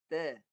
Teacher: Ta ni ujung lidah tadi. Ujung lidah ke gusi atas. Pangkal gigi atas.